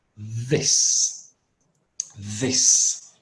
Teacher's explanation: you need to put your tongue a little bit out and you need to voice it